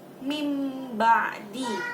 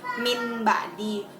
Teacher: mengubah nun mati atau sukun menjadi huruf mim. Jadi jika ada nun mati bertemu dengan huruf ba, huruf iqlab itu cuma 1, yaitu ada huruf ba, maka kita harus menggantinya menjadi huruf mim, dirubah.